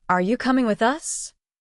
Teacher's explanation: Say it with your voice rising at the end. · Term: Rising intonation